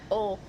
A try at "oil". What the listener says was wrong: You're saying all.